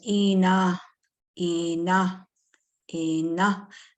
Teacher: The N is not nasalized, so don't put a tail on it.